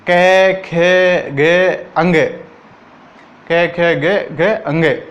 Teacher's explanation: इन सभी का उच्चारण जो है कंठ से होगा।